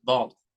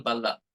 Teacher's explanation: So the sound B, the letter B, which gives the consonant sound B, is very light in English, whereas it is heavy and stressed in Telugu.